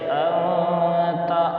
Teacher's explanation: فذکر انما انت مذکر، دیکھیے انما انت میں مد منفصل ہوگا کیونکہ حروف مدہ کے بعد حمزہ دوسرے کلمے میں آیا ہے اور نون پہ تشدید ہے اس لیے اس کو غنّے کے ساتھ بھی پڑھیں گے، یعنی انما، اور انت میں اخفا ہوگا یعنی ناک میں نون کی آواز کو تھوڑی دیر چھپا کر پڑھیں گے